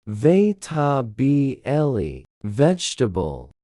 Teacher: The second E is swallowed completely in natural speech.